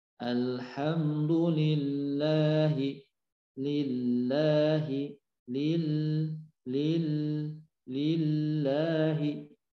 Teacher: Lam bertasydid, kadar nempelnya, kadar penekanannya ke ujung lidah ke langit-langit sama dengan ketika sukun. Bedanya ketika bertasydid itu nempel di langit-langitnya sedikit lebih lama dibandingkan dengan ketika sukun.